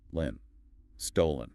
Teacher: The second syllable is softer, almost falling away.